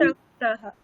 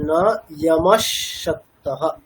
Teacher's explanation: বিসর্গটা তালব্য সর মতো উচ্চারণ হবে সন্ধি হয়ে